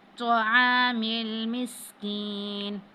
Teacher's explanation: سین جب ادا کرتے ہیں تو سیٹی کی سی آواز آتی ہے